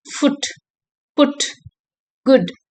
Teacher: the lips are rounded and the sound is short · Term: short near close back